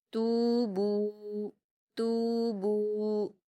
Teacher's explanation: تا پر واو مدہ ہے، اس کو ہم 2 حرکات کھینچ کر باریک پڑھیں گے۔ با پر بھی واو مدہ ہے، اس کو بھی 2 حرکات کھینچ کر باریک پڑھیں گے۔